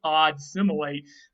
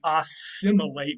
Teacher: So you can see that I've graphically written it out there on your screen, that you can see odd similate becoming assimilate with two S's, because that D undergoes total assimilation to the S that is at the start of the similate part of the root